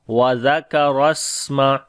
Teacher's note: सीन के साथ मिलाएंगे तो सिफ्ते हम्स करेंगे और सिफ्ते सफ़ीर भी होगी